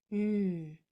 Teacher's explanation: The sound for N is made with your tongue going to the top of your mouth and it stays there.